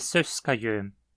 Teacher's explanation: Em Söskajön, temos 3 sílabas pesadas, mas Sös é aquela que, de acordo com as regras, leva o acento.